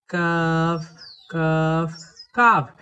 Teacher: কাফ অক্ষরকে জিহবার গোড়ার একটু উপর থেকে চিকন করে পড়তে হয়।